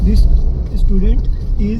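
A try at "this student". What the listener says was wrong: दिस सुन, दिस स्टूडेंट, दिस स्टूडेंट नहीं है, दिस स्टूडेंट। अब जब मैंने फ्लो में बोलना है दिस स्टूडेंट, मतलब वो जो दिस का स हुआ ना वहीं से मैं स्टूडेंट शुरू कर दूंगा, मैं रुकूंगा नहीं।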